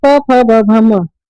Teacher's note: उच्चारण करते समय हमारे होठ जो है आपस में चिपकते हैं या फिर टकराते हैं, आपस में एक दूसरे से लड़ते हैं, ठीक है, टक्कर देते हैं, उन्हीं को बोलते हैं हम ओष्ठ्य वर्ण।